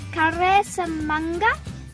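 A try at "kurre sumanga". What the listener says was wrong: Not kare. Kure. Yeah, kure sumanga.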